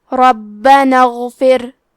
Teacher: غین کی ادائیگی حلق کے اوپر والے حصے سے ہے. غین حروف تفخیم میں سے ہے تو ہم یہ حرف کو موٹی آواز میں پڑھیں گے. · کلمت ربنا میں حرف را پہ زبر ہے، لہذا یہاں را کا حکم ہے تفخیم، تو ہمیں حرف را کو موٹی آواز میں پڑھنا ہے. حرف البا پہ تشدید ہے تو ہم دو حرف کے برابر با کو پڑھیں گے · کلمت اغفر کی شروعات میں الف ہے لیکن یہ حمزۃ وصل ہے تو ہمیں حمزہ کو ظاہر نہیں کرنا ہے